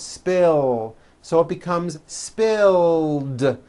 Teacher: spill ends with a voiced l sound